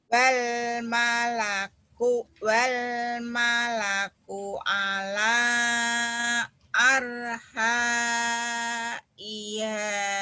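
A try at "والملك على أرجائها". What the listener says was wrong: Arja ada titiknya ini ya, titik ini. Titiknya nyambung sama ro. Seperti ini titik nih. Arja jim bukan arha.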